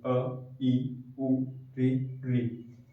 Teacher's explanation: एक बार पलक झपकाने में जितना समय लगा है उतने काल में जो अक्षर बोले जाते हैं वो ह्रस्व स्वर हो जाते हैं